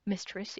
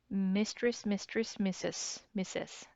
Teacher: And then the R sound almost like mistress. If you say quickly a lot of times throughout the day, the R sound is like, not heard.